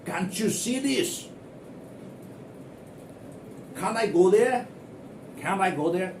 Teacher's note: C-A-N apostrophe T. So after N there is this T. So this T is absolutely soft or even sometimes silent.